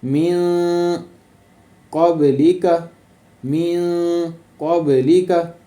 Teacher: آواز کو ناک میں لے کر جانا ہے، مین دبانا نہیں ہے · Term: اخفائے حقیقی